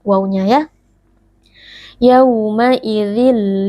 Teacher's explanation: karena ada wau sukun yang sebelumnya berharakat fathah dibaca dengan lunak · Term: Lin